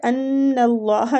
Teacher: نون مشدد ہے اس پہ غنہ کریں گے، غنے کی مقدار ایک الف ہے